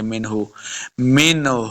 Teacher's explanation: منہ، بغیر غنہ کے پڑھیں گے. منہ، منہ، ہاں کو حلق کے نچلے والے حصے سے ادا کریں گے. یہاں پہ ہم نے وقف نہیں کرنا تو اس لیے ملا کے پڑھ رہے ہیں، ہاں کے اوپر پیش پڑھی جائے گی.